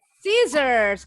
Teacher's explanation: Bunyi S terakhir seperti Z.